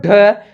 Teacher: तो इसमें हा की ध्वनि आनी चाहिए, उससे हम लोग क्या कहते हैं द्विगुण कहते हैं।